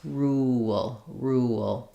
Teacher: My mouth will naturally make the w shape as I'm moving from a rounded to an unrounded vowel. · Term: vowel to vowel linking